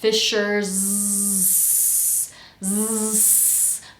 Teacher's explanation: We end fishers with a vibrating z, and then we start search with a voiceless s. Fishers. Notice how my voice turns on and then off.